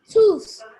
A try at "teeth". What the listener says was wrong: Please look at the word. It's not tooth. Open your eyes and look at the vowel in the word. It's not O. This is the word that comes after mouth. It's not tooth. Look at the word.